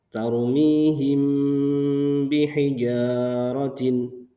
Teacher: Nah, ini hurufnya yaitu ba. Jadi apabila mim sukun bertemu dengan ba, ini dibaca ikhfa syafawi dengan cara dibaca samar